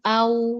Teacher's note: Hasil akhir huruf wau saat kita mengucapkan sukun dia monyong.